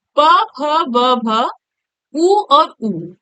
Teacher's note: ठीक, ये आपका क्या है, ओष्ठ से इसका उच्चारण स्थान, इसका क्या है, ओष्ठ है। यानी प फ ब भ जब हम बोलते हैं तो होठों का प्रयोग होता है।